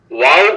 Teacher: ওয়াও ঠোঁট গোল করিয়া মুখ গোল রাখিয়া ওয়াও উচ্চারিত হয় বা ঠোঁটের ভিজে জায়গা হইতে, এবং মিম ঠোঁটের শুকনা জায়গা হইতে উচ্চারিত হয়।